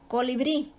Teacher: Salón, su sílaba tónica está en lon, la última sílaba, termina en n, por lo tanto se acentúa. Colibrí, la última sílaba bri es la tónica y termina en vocal, por lo tanto se acentúa.